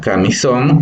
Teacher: La palabra camisón igual se divide en 3 sílabas, donde la sílaba tónica o la que tiene mayor entonación es son, porque tiene nuevamente en este caso tiene un acento gráfico a través de la tilde.